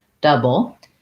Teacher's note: l e which is a b plus a syllabic l so syllabical means i'm saying just the l sound and there's no vowel but it still functions as a syllable · you go right from the b to the l but the back of the tongue needs to stay down to get that uh like sound